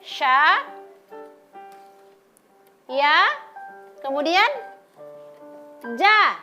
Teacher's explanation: huruf ja dan huruf sya dan huruf ya sama-sama keluar dari tengah lidah